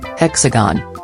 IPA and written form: ˈhɛksəɡən (Hexagon)